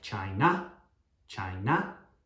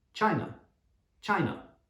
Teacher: it's not an ah sound it's an uh sound